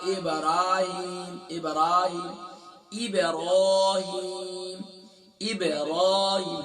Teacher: با پر قلقلہ ہوگا، را فل میں آؤٹ ہوگی، ہا کو گلے کے بوٹم سے ادا کیے